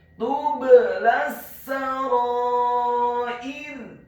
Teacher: Kata tublas sarair, huruf ta-nya dibaca tipis, tarqiq, dhamma satu harokat. Huruf ba-nya dibaca sukun dan wajib untuk diqalqalahkan atau dipantulkan.